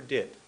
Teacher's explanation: my tongue goes up behind my teeth for did